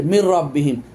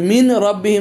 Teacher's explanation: না যেমন মিম নুন আছে তারপর র আসছে মির রব্বিহিন এটা আমরা দেখেন নুন টাকে নুন সাকিন টাকে ঢুকায় দিছি র ভিতরে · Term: ইদগাম